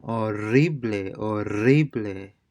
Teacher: This is the trilling R because you have two R's together